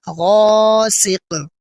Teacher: غین الف زبر غا، سین زیر سی، غاسی، قاف دو زیر قن، غاسق، وقفاً غاسق۔ آخر میں حروف قلقلہ میں سے قاف ہے، اس لیے یہاں قلقلہ کریں گے